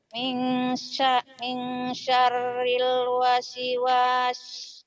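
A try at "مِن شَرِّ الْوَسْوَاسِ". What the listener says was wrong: kok wasi jangan wasi ya.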